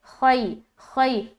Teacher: خا حروف مستعلیہ میں سے ایک ہے، اس کی ادائیگی موٹے طریقے سے کرتے ہوئے ہم یا لین کر رہے ہیں، نرمی کے ساتھ ملا رہے ہیں